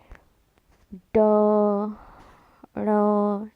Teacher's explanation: जीवा पहले ऊपर जाती है और मूर्धा मतलब मूर्धा को स्पर्श करते हुए आती है। फिर तेजी से नीचे गिरती है और वायु से बाहर निकलती है।